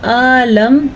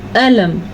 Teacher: لام کو باریک پڑھنا ہے، حمزہ کی حرکت کو ہلکے سے ادا کرنا ہے، اس کو لمبا نہیں کرنا